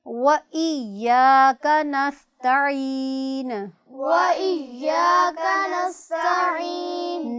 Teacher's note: کاف کو بھی موٹا نہیں پڑھنا باریک پڑھنا ہے